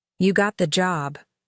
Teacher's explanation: Flat tone sounds like a fact.